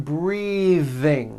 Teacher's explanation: i am breathing with a voiced th